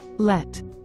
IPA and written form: lɛt (Let)